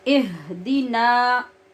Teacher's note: जो हा है ये मैंने बहुत मोटी पढ़ी है, जिससे बहुत भारी आवाज़ पैदा हुई है